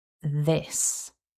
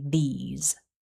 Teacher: make sure you keep the vowel short and don't voice the s. Because if you voice the s and make the vowel longer, you will accidentally say these instead.